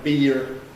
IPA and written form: biːr (beer)